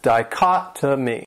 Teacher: has four syllables, and the stress is on that second syllable